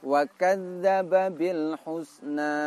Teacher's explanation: Yang pertama dzal berharokat sukun dan yang kedua dzal berharokat fathah. Dzal yang berharokat sukun lalu diidghamkan atau dileburkan ke dzal yang berharokat fathah. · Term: tasdid asli